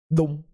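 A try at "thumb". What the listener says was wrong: No, it's got a bit of out. It's got a bit of exhale. But not thum. So, tongue between teeth.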